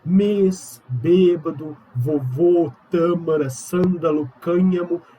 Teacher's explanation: E eu tô falando delas quando elas têm timbre fechado, mais fechado. O acento circunflexo, ele traz essa característica de um timbre mais fechado